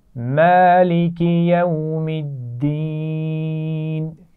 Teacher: دال پر شد ہے اس کا خیال رکھیے گا. دال کو 2 دفعہ پڑھیں گے. ایک دفعہ میم سے ملائیں گے اور ایک دفعہ زیر کے ساتھ پڑھیں گے.